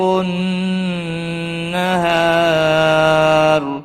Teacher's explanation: ہا الف مدہ ہے، ایک الف کے برابر کھینچ کر پڑھیں گے، اور را وقف کی صورت میں را ساکن پڑھا جائے گا اور پور بھی پڑھا جائے گا۔ را ساکن سے پہلے جب بھی زبر آتا ہے تو پور پڑھا جاتا ہے۔